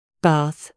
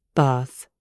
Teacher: In the north of the UK and America, it is a short A, like in cat.